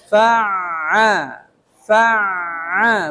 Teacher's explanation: Jangan fa'al. Kalau fa itu jadinya syiddah. Sedangkan ain sifatnya tawassut bainiyah. Dia harus mengalir tuh.